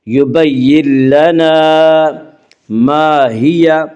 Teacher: یبین لنا، الف مدہ، الف ہمیشہ مدہ ہوتا ہے، الف سے پہلے ہمیشہ زبر ہوتا ہے، الف مدہ کو ایک الف کے برابر کھینچ کر پڑھیں گے